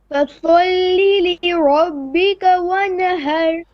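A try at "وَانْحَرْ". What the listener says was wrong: One har. Don't bounce the noon. Ra is heavy. Okay, you're bouncing the noon. One har.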